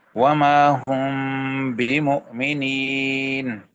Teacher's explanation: میم ساکن کے بعد با آ گیا، یہاں پہ غنہ ہوگا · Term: میم خفات